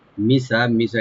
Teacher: এখানে কোনো টান নাই, সিনটাকে ওপেন রাখবেন।